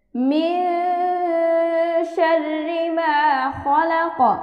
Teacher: নুন সাকিনের বামে শিন, অর্থাৎ ইকফা, আমরা নাকের ভিতর লুকিয়ে অস্পষ্ট গুণা করে পড়ব